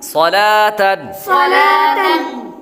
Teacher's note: صاد حروف مستعلیہ میں سے ہے، اس لیے اس کو پر پڑھیں گے۔ لام لفظ اللہ کے لام کے علاوہ باقی تمام لام باریک ہے۔